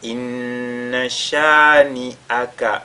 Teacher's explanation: Inna shani'aka huwal abtar. Inna, on fait al-ghunna sur la lettre nun mushaddada